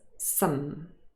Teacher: vowel sound is ah some however usually this word is not stressed and it occurs in its weak form with the schwa some so if it's stressed some and if it is unstressed